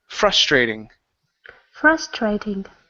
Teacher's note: The stress is at the beginning.